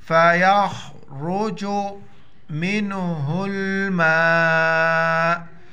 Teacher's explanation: میم نون سے پلس ہو جائے گا، ہا لام کے ساتھ، پھر الف پر مد ہے، 5 الف دار کھینچیں گے اس کو